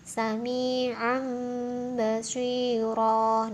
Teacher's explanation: Iklab, cara membacanya membalik atau mengganti bunyi nun sukun atau tanwin menjadi bunyi mim